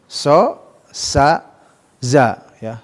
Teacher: mengeluarkan ujung lidah ya dengan gigi paling depan bagian bawahnya, itu secara umum ya, dari makhrajnya huruf ketiga huruf safir ini, baik so-nya atau sa atau za ya.